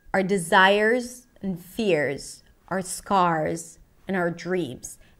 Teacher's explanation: So the word our reduces to are. Sounds like the word are or the letter R.